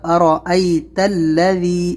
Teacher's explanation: را کو موٹا کرنا ہے، ارا، را پر زبر ہے تو موٹا